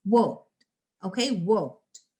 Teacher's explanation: Okay, so whenever you have at the end, when you have these sounds, these consonants, then when you're adding your ed at the end, it's going to be the sound of, like it says, t, all right, and the t is blended together with the previous consonant, and the next is it not pronounced as an extra syllable. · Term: sound of t